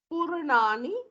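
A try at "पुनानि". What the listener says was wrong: No, there is no pu.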